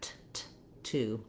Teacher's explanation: we actually do a true two uh t sound there with a puff of air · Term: true T sound